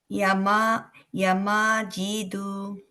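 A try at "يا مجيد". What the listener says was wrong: ইয়াতে টান হবে। ইয়া মাজিদু, জিতে।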